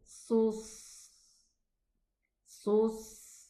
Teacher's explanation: The sad has Rikhwah, so the sound is running.